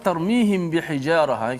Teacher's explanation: kita baca secara Ikhfa Syafawi itu kita kena panjangkan kadar dengung biasa tuh dan yang kedua pastikan mulut kita itu sentuh bibir kita